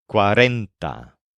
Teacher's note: This word, cuarenta, is pronounced with a stress on the syllable ren.